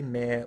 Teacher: However, some might say mare with an R-coloured vowel. Many accents slide this vowel towards the schwa. However, it typically begins as the front open mid vowel.